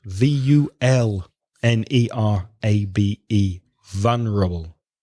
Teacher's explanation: So the stress is on the first syllable in English.